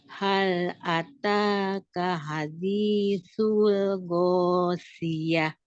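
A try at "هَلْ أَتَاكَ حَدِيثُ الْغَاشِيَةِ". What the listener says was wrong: Masih kurang berisik ya shi-nya. Shi. Ghosyah. Ghosyah. Ghosyah.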